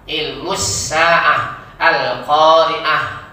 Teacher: kalau wakaf berhenti bacaannya menjadi huruf ha. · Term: ta marbutah